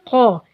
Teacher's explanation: زبان کی جڑ بالمقابل اوپر کے تالو سے ٹکر کھائے گی تو ق ادا ہوگا. زبان کی بالکل جڑ یعنی آخری حصے کو اوپر کے تالو سے لگائیں گے تو ق موٹا اور اونچا کر کے ادا ہوگا